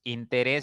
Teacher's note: es una palabra que termina en consonante s ya y la mayor fuerza está en la primera sílaba contando de derecha izquierda por lo tanto debe llevar tilde